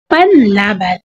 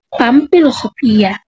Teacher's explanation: Pang na maaaring maging pan o pam dahil sa impluwensya ng kasunod na katining. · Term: asimilasyon